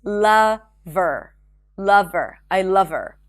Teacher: Instead of saying love her, remember we drop the H in pronouns